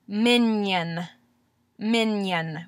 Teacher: and produce what it is is when you're making a consonant you're pushing the middle of the of your tongue up to the top of your mouth otherwise known as your pallet and you're doing this at the same time as you're articulating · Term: palatalization